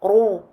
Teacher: Pour faire at-tafrim, donc l'emphase du ra, on remonte comme à notre habitude pour faire tous les ra, le bout de la langue, mais également le fond de la langue. Il se produit donc cet écho à l'intérieur de la bouche, un creux au niveau du milieu de la langue, un rétrécissement de la gorge.